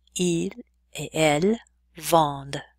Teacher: That ENT ending is silent.